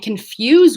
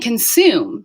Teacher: So we're dropping the y after what? After S sounds